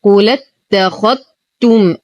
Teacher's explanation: الذال لا تنطق فهي ساكنة وتدخل دخولا كاملا في التاء، وهذا سبب تشديد التاء. ولو ابتدأنا بالكلمة نبتدئ بهمزة الوصل مكسورة اتخذتم. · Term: إدغام الذال بالتاء